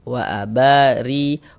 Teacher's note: Wa abari, huruf ro kalau dia memiliki harokat kasroh, baris 1 di bawah huruf namanya harokat kasroh atau tanda baca kasroh atau baris kasroh. Maka huruf ro dibaca tipis, tarkik, tipiskan huruf ro-nya.